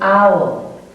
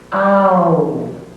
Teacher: Next comes a diphthong sound, ow, as in owl. It's made up of ah, oo, blended together.